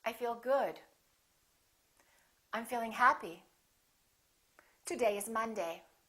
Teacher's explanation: making sure that your voice goes down at the end, that your pitch goes down.